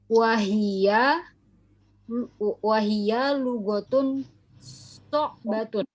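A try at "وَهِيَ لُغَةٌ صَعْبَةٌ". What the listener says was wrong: Aywa, naam, ahsanti.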